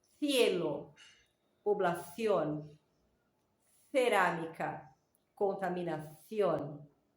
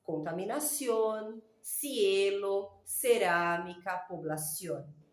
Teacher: en España, ellos ponen la lengua al medio de los dientes y soplan para que consigan hacer esa pronunciación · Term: típico del acento español